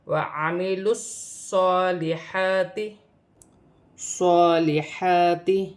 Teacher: صاد موٹا ہے، سیٹی والا حرف ہے اور یہاں مشدد ہے، 2 مرتبہ پڑھا جائے گا، ایک اپنے سے پہلے حرف کی حرکت کے ساتھ ملا کر لام کے ساتھ وَعَمِلُوا الصَّالِحَاتِ، اور صاد پر کھڑی زبر بھی ہے، ایک الف کی مقدار کھینچ کر بھی پڑھا جائے گا۔